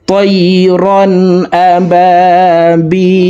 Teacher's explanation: তিন আলিফ টেনে লামকে সাকিন করে ফেলবো, কারণ জেরের বাম পাশে জজমালাইয়া মদের হরফ, তো এই মদের হরফের বামের হরফে ওয়াকফ হইলে মধ্যে আরজি তিন আলিফ টেনিয়া পড়িতে হয়।